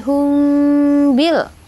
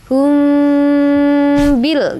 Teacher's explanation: Jadi, mim mati bertemu dengan ba maka dia harus dingung. Sebut dengan ikhfa syafawi.